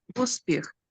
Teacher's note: We just pronounce it shortly, uspіх. We don't even move our lips